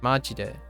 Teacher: Majide is my first inclination. Majide. So high, low, low. In this case, use the questioning rising pitch.